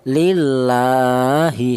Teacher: Jadi setiap ada huruf yang berharakat berdiri di situ dibaca panjang yaitu satu alif atau dua harakat atau dua ketukan